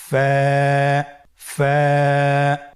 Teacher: স্ক্রিনে দেখতে পাচ্ছেন ফায়ের মাখরাজ। ফায়ের মাখরাজ হলো নিচের ঠোঁটের প্যাড সামনের উপরের দুই দাঁতের আগার সঙ্গে লাগিয়ে উচ্চারিত হয়।